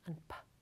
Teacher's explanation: If we obstruct our vocal tract at the lips, like for the sounds [b] and [p], the place of articulation is bilabial.